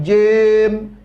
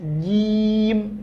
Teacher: Kemudian jimnya baris bawah. Jadi jangan jem, enggak, tapi jim murni. Bunyinya adalah huruf I.